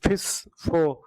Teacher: ऊपरी दांत और निचला होठ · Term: वॉइसलेस